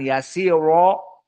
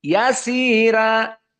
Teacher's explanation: Adapun qiraah yang ketiga, Wars berbeda dengan kedua yang kami sebutkan tadi dari segi ro al-muraqqaqah. Maka dibaca sama dari awal sampai kepada akhir, namun ro-nya ditarqiq.